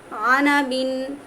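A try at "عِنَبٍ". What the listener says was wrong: আপু আপনি আনাবিন যেটা বলছেন ওটা জের আছে, ইনাবিন হবে।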